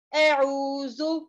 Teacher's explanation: قل اعوذ زا زا اس طریقے سے نہیں پڑھنا. زال میں بزنگ ساؤنڈ نہیں آنا چاہیے.